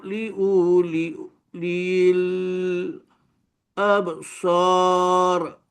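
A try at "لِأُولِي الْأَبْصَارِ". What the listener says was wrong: Okey, bunyi dah ada dah, betul dah bunyi dia. Cuma panjang kat sini je. Hamzah tu pendek je. Li'u, pendek je. Li'ulil absar.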